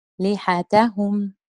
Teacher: اللام والتاء النبر على حركة اللام وحركة التاء